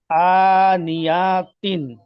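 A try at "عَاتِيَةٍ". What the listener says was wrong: আনিয়াতিন, জলদি পড়তে হবে, আনিয়াতিন।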